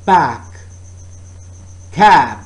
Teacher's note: oral passage is blocked by closing the lips and again this is a bilabial sound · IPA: /b/